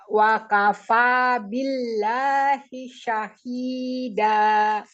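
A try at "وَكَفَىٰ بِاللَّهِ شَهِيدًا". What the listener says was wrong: Wa kafa, ya dibuka mulutnya. Wa kafa billahi syahida.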